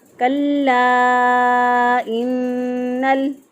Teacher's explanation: हम इसको पढ़ेंगे अल्लमल इंसान मा लम यअलम कल्ला इन्नल इंसान लयतग़ा कल्ला इन्नल। कल्ला लाम के ऊपर शद है, मजबूत क़ुव्वत से पढ़ेंगे। काफ को बारीक पढ़ेंगे और लाम को भी बारीक पढ़ेंगे।